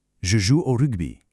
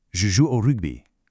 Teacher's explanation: You got to engage that French R at the back of the throat and the French U, which is super tight.